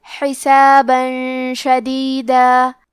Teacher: کلمت شدیدہ، شین حروف الاخفاء میں سے ہے، تو ہم یہ حکم کو غنہ کے ساتھ ادا کریں گے